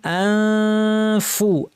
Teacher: ফা বলার জন্য ঠোঁট রেডি, দাঁত ঠোঁটের উপর এসে রেডি, নাক থেকে গুন্না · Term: ইখফা